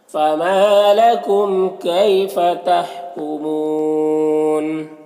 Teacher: فما ما میں الف مدہ 1 الف کے برابر کیجئے گے، یہاں پر میم میں اظہار شفوی ہوگا۔ کیفا میں یالین سے نرم آواز کے ساتھ جلد پڑھیں گے، یہاں پر وقف کی صورت میں مد عارض وقفی ہوگا تو اس طرح سے پڑھیں گے۔